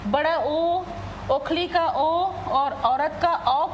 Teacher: तो हमारे होठ क्या हो जाते हैं, गोल हो जाते हैं। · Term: वृत्तमुखी